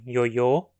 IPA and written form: jojo (ioiô)